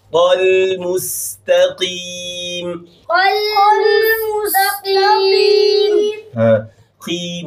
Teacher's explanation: قاف کی نیچے زیر ہے تو اس کی مٹائی سب سے کم درجے کی ہوگی